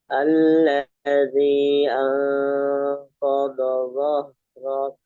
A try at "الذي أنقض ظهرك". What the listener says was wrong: alladzi kurang panjang.